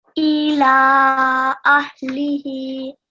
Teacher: So maybe try to pronounce the lam a little bit longer. So at least 3 seconds. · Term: Madd al-Saghir